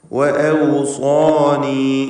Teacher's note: വഔസാനി സ്വാദിനും അലിഫിനും തഫ്ഖീമാണ്. ഇസ്തിഅലാന്റെ അക്ഷരത്തെ ദീർഘിപ്പിക്കുന്നു.